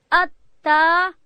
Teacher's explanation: تا ادا کیږي هر کله چې د ژبې سر د لوړې زامې د مخ د دوو غاښو او بیخو ته ورړو، دلته تا ادا کیږي.